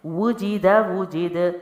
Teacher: پہلے حرف پہ ہونٹ گول ہوئے، اگلے پہ نہیں کیے کیونکہ زیر تھی اور اس کی آواز پست ہے، اور دال کو میں نے حرکت دی ہے یعنی حروف قلقلہ ہے، ہلا کے پڑھتے ہیں